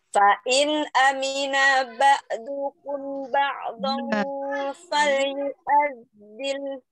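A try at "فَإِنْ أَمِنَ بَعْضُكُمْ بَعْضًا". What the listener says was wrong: Bukan fa in amina. Nah, jangan langsung pendek. Nah, fa in amina ba'dukum.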